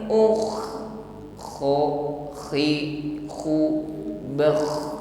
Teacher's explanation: Ketika sukun kho-nya bunyinya masih ngalir, ya, dengkurnya itu ngalir karena sifatnya rakhwa.